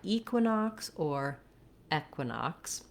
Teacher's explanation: So we have for the QU, we have the qu sound, the I, nox, the OX says an clear ah with a ks sound at the end